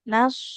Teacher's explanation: Huruf shotnya dia selain harus tebal, mengalir suara dan juga punya sifat sofir atau dasit ya.